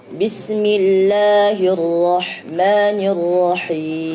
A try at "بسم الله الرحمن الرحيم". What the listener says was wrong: Hati-hati ya, jangan bism seperti mantul. Bismillah.